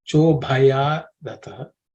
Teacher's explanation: This bha is aspirated because it's the fourth letter in the pa varga.